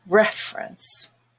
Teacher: But it changes in reference, where the first E is no longer a schwa because it's stressed, and it has the red vowel, eh, and everything else is a schwa. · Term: syllable stress